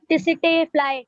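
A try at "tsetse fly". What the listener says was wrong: वो CC fly होता है. T is silent. Okay, CC fly. सीसी फ्लाई.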